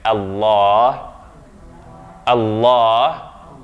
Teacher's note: the lam here is emphatic. It's the only case in which it will be emphatic in the name of Allah. Therefore, the vowel that comes after that lam is ah and not a.